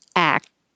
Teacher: So then the T can connect to the next vowel if there is one. So if you just say act, you won't hear a K or a T. Your tongue is stopping the airflow in the K position, and then the T position, act.